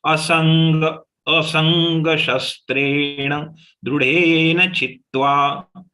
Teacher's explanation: The anuswar of sa has got converted into nga, and since next letter is ga, that's why it became joint letter, and that's why there is a stress on sa.